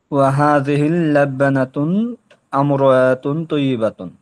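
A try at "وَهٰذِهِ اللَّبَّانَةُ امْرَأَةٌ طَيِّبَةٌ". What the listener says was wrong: আবার আমার হচ্ছে আমার, তা যেহেতু মিমকে ধরেই ফেলছে, আবার আবার টেনে আসলেন কেন? হামজা, হামজা দিয়ে ধরলেন।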